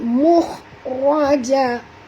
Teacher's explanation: Mukh huruf kha tuan-tuan ya, mukh tebal ya, ra juga tebal. Mukhraja, raja, ja tak tebal.